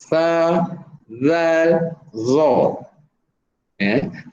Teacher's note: Pastikan hujung lidah dikeluarkan sedikit dan ditekan ke gigi kacip atas.